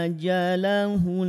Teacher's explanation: setiap nun bertasydid pasti dia punya tanda tahan 2. Maka dibacanya tahan dan didengungkan 2 harokat.